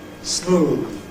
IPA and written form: smuːð (smooth)